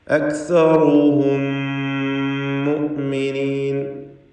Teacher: ഇവ രണ്ടിനെയും ഇദ്ഗാം ചെയ്ത് ഷദ്ദുള്ള മീമാക്കി മണിച്ചുകൊണ്ട് ഉച്ചരിക്കണം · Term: ഇദ്ഗാം ഷഫവി